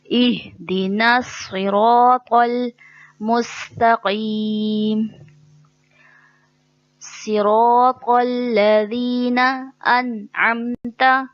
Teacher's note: تو اور تا سیم مخرج ہے, وہی فرق کرنے کے لیے اس کو تو کو پر پڑھیں گے, موٹا پڑھیں گے. باریک پڑھیں گے تو وہ تا بن جائے گا, تو غلطی ہو جائے گی.